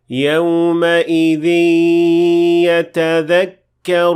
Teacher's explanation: we merged the noon of the tanween with the ya. That's why we have this symbol.